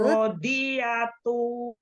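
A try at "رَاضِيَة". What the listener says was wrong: Tidak dong. Di wakaf. Ro-nya panjang ya. Ro-nya panjang.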